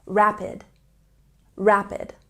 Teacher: say rapid with a stress on the first syllable